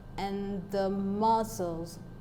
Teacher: part we have and the being unstressed and that we have the first part of the word muscle being stressed that is mus as the stressed syllable of the world now